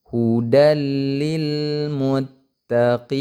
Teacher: Namanya itu idgham bila gunnah. Jadi idgham tidak disertai dengan dengung ya. Hudalil, jadi dilangsungkan aja.